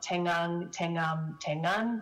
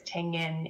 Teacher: we get this vowel raising before the alveolar nasal of the suffix